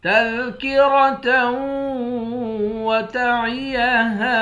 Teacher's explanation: تا کو واو کے ساتھ ملا کر یہاں ادغام کریں گے، یہاں غنہ کر کے پڑھیں گے۔